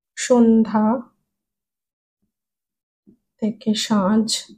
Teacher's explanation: নাসিক্য ব্যঞ্জন ধ্বনিগুলো লোপ পেয়ে পূর্ববর্তী স্বরধ্বনি সানুনাসিক হয়ে যাচ্ছে